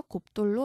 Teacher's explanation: 받침 비읍 뒤에 디귿 이어지네요. 그러면 된소리로 바뀌어서 곱돌로 말합니다.